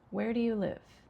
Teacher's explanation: This is a question that begins with what we call a WH word, where. So it has falling intonation.